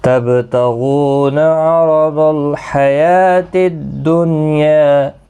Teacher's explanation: با ساکن پر قلقلہ ہوگا، غین مستعلیہ ہے، پر پڑھا جائے گا، واو مدہ بھی ہے، ایک الف کی مقدار کے برابر کھینچ کر پڑھیں گے۔